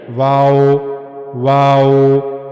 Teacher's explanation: वाव के बारे में हमने पढ़ा कि दोनों होठों को गोल घुमाना है। लेकिन दोनों हंठ आपस में मिलने नहीं चाहिए। · واو کے بارے میں ہم نے پڑھا کہ دونوں ہونٹوں کو گول گھمانا ہے لیکن دونوں ہونٹ آپس میں ملنے نہیں چاہیے۔